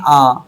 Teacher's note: जिनके उच्चारण में दो मात्रा का समय लगता है उसे हम लोग दीर्घ स्वर कहेंगे